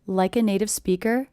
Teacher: I also notice the stress is big small big small big small